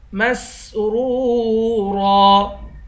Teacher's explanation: سین کی سیٹی نکال کر ان دونوں را کو موٹا پڑھیں گے، را کو واو کے ساتھ ملا کر واو کو ایک الف کی مقدار کھینچیں گے۔